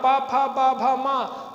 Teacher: दोनों ओंठ स्पर्श करते हैं, उनका उच्चारण स्थान ओठ है।